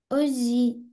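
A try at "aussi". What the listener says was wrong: Уси, уси. Когда у нас две буквы «С», они у нас будут читаться просто «С». И еще в каких-то, вот, например, «роз», там будет пишется «Р-О-С-Э», и оно будет читаться, «С» будет читаться как «З». А здесь у нас читается просто как «С».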